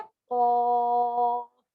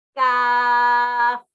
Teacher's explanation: خوف with round lips کیا ہے خوف. کاف ود اے اسمائلنگ فیس کیا ہے کاف.